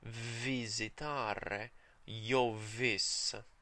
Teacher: proper consonants with friction between the teeth and the lower lip.